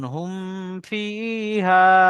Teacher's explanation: মিমের উপরে সাকিন এসছে, মিম সাকিনের পরে ফা এসছে, বা মিম ছাড়া ফা এসছে, মিম সাকিনকে বিনা গন্যায় জাহির করে তাড়াতাড়ি পড়তে হবে, একে ইজহারে সাফাবি বলে।